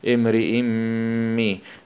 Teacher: همزة كسرتين مع الإدغام بغنة في الميم المشددة